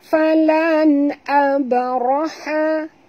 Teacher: Nun mati bertemu dengan hamzah. Tak boleh dengung izhar halqi, ya. Ini izhar halqi.